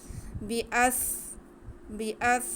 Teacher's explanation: سین میں سٹی کی آواز آئے گی